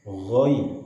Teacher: ghainnya diucapkan dengan getaran yang halus, tidak sekasar kha, tidak ghairi, tapi ghoi.